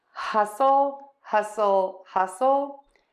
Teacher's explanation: the T in hassle or hustle rather is silent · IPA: /ˈhʌsəl/